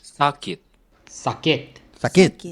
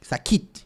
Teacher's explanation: the emphasis in Indonesian is the beginning, like the strong A. And in Filipino, it's more like the middle of the word, the first the consonant, the K, like sakit.